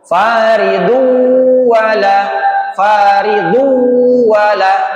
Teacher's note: Padahal tanwin bertemu dengan wau hukumnya tanwin bertemu dengan wau hukumnya idghamunah. Cara mengucapkannya masuk disertai dengan dengung.